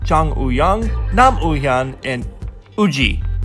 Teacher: Not sure why they put a W in the romanization of these names, but there's no W sound to be found.